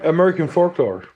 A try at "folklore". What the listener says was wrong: Don't pronounce a K. It is folklore.